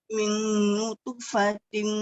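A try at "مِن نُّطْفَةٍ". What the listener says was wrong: Nutf. Macam nak sebut huruf ta, tapi kita kasih dia detik. Min nutfatin. Yes, macam gitu. Sebab tadi saya nampak setiap kali ada huruf yang qalqalah terberhenti suaranya.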